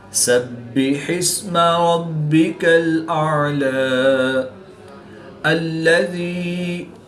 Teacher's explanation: حمزہ کو حلق کے نیچے والے حصہ سے اور عین کو حلق کے درمیان والے حصہ سے ادا کر کے پڑھیں گے۔